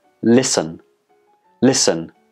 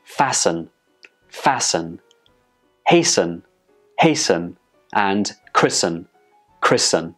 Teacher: the T in the spelling is totally silent · There is no T sound in any of these words when we pronounce them. The T in the spelling is completely silent.